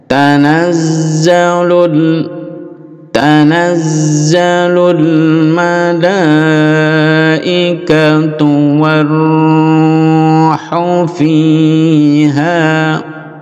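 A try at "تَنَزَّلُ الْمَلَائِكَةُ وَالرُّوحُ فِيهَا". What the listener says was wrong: Khu juga pendek.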